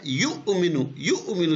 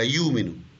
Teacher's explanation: یؤمنو جھٹکے کے ساتھ حمزہ ہے نا، یؤمنو. دوسرے کیس میں سموتھ کہلائے گا یؤمنو